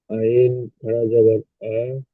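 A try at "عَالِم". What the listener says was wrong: আ, টান দিয়ে বলেন, যেখানে টান হবে সেখানে টান দিয়ে পড়বেন, একটু দেখে পড়বেন।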